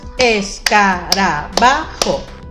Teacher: Nos damos cuenta que en la ba se escucha más fuerte. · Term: acento prosódico